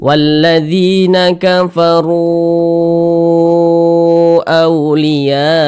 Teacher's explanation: Kafaru, kita panjangkan 4 harokat atau kira-kira 4 ketukan. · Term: mad jaiz munfasil